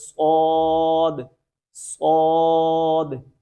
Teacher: صاد کو ادا کرتے وقت بھی ہماری زبان کی جڑ جو ہے یہ اس کو ہم نے اٹھانا ہے، تو اس کو بھی موٹا کرنا ہے